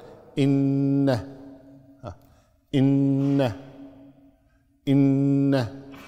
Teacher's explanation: فالنون المشددة والميم المشددة تعطيها غنة بمقدار حركتين